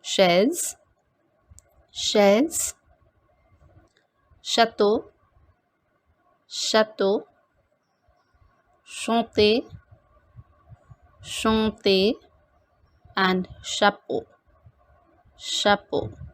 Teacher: In French, CH always has the sound of sh, not as that in chair. It is pronounced as sh. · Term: sh sound